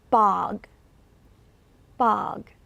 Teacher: It's spelled with an O, but it's pronounced as an ah. And this is very open. This is the most open sound. I always say when you look at the O, think about that as the back of your throat, making an ah, that O sound in the back, very open.